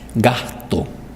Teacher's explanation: gasto o podemos aspirar la gasto en el primer caso gasto la aspiración fue muy sorda casi no tiene sonido